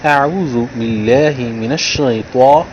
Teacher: تو کو موٹا کیا ہے تاکہ تا اور طا میں تمیز ہو